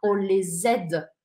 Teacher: Obrigatoriamente eu vou grudar o S com o AI e vai ficar on les aide.